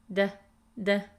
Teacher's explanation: The flap T in American English sounds like a soft D sound.